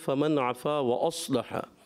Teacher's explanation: اور دوسری آیت میں فمن عفا و اصلح، صاد کی ادائیگی آپ نے پر کرنی ہے، صاد موٹے حروف میں سے، ایکسٹرا موٹے حروف میں سے، مستعلیہ بھی ہیں اور ایکسٹرا موٹے، یعنی ان کو زیادہ پر کر کے پڑھا جاتا ہے